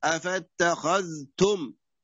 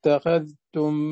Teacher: حيكون حكمه هنا الإظهار، إظهار الذال وليس الإدغام